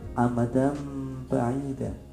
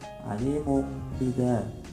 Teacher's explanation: jika terdapat nun mati atau tanwin bertemu dengan huruf iqlab, dibaca membalik menjadi mim. Contohnya hurufnya iqlab itu hanya ada satu, yaitu huruf B.